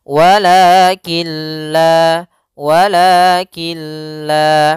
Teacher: nun sukun bertemu dengan huruf lam maka cara membacanya masukkan langsung ke huruf huruf lam dan nunnya menghilang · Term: idgham bila ghunah, idgham bila gunnah